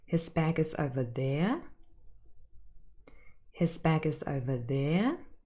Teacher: I used a full rising intonation, and hopefully you picked up on the message here that I showed surprise by this fact.